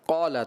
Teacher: زبان کی جڑ اور تالو کے نرم حصے سے قاف ادا ہوتا ہے، جبکہ آپ نے اس کو ادا کیا زبان کی جڑ اور تالو کے سخت حصے سے.